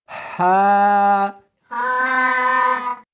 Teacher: اس کو حلق میں سے نکالنا ہے اور ساتھ میں ہوا بھی ہونی چاہیے.